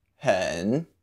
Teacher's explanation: Just say with a dipping tone.